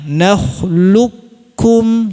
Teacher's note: Kamil itu qaf-nya dihilangkan sempurna. Jadi, jangan ada bunyi tebal sama sekali.